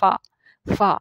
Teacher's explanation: جو فا ہے یہ ہمارے اوپر والے جو دانت ہیں ان کی نوک لگتی ہے نیچے والے ہونٹوں کے ساتھ